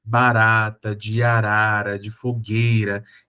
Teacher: esse Rzinho fraco, né? O R brando, o R fraco, R-tap, é o R alveolar.